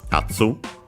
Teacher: Yatsu is accented, by the way, on the first syllable